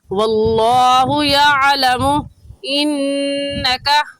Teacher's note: یعلم میں آئین کو نکال کر پڑھیں گے، اور آئین کا مخرج کہتے ہیں جس جگہ سے حرف نکلتا ہے۔ تو آئین کا مخرج ہے کہ حلق کے درمیانی حصے سے آئین نکلتا ہے